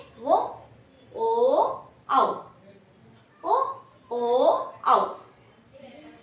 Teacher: కాబట్టి వీటిని కంటోష్యాలు అంటారు. కంఠం మరియు పెదవి నుంచి పలుకబడేటువంటి అక్షరాలు కంఠోష్యాలు